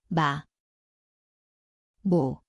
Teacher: Here is the letter. mieum, It sounds like M. The place is the both lips nasal.